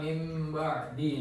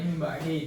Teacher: dibaca dengan dengung guna selama 2 harokat. Yang ketiga itu bibir tertutup lembut karena mim diucapkan dengan 2 bibir. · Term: iklab